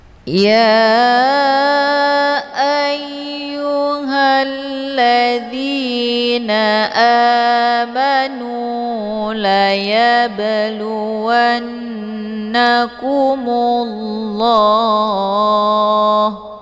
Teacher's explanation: Ini dinamakan dengan qalqalaf sur. Cara bacanya bnya dipantulkan dengan pantulan ringan. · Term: qalqalaf surah